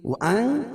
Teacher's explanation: وَأَن اخفا حقیقی، کیونکہ نون ساکن کے بعد حروف اخفا کے 15 حرفوں میں سے زا ہے تو یہاں ناک میں آواز کو چھپا کر پڑھیں گے